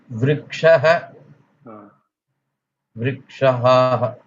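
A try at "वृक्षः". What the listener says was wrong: Vrikshaha. There is no 2 ha. There is only 1 ha at the end. Vrikshaha, Vrikshaha.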